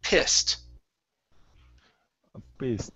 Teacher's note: it's a short I sound. I, p, and then the ed is a t.